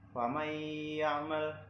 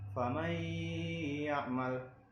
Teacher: Nah, contohnya yang pertama dari ya, famay ya'mal, ada nun sukun bertemu dengan ya, jadi dibacanya didengungkan dan ditasydidkan